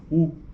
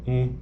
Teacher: então é diferente olha a oral é assim u e a nasal um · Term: vogal nasal